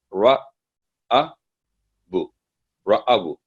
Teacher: جو آگے الف ہے وہ اس میں آواز لمبی کرنے میں ہیلپ نہیں کرے گا کیونکہ اس سے پہلے دمہ ہے، تو اس سے پہلے فتح ہونی چاہیے اگر آواز لمبی کرنی ہو اس کی الف کے، تو رَأَبُ۔